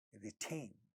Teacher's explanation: In this word, retain, second syllable has 2 syllables, second syllable is stressed. In the initial position of this syllable, we have a voiceless stop, ta, and it's getting aspirated.